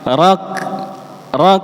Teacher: ketika mensukunkan huruf kaf itu berikan suara hams di belakangnya. Ada suara nafasnya. Rak. Nggih, jadi ada sisa suara nafas di belakangnya.